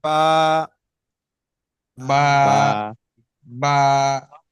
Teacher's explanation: দুইটা ঠোঁট ভিজে অংশটাকে মিলিত হয়